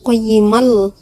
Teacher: Qayyiman di sini dibacanya bukan qayyiman, tapi langsung masuk ke dalam huruf lam ini karena idgham bila huna memasukkan tanpa dengung. Yaitu cara bacanya qayyimal, berarti langsung dimasukkan ke dalam huruf lam.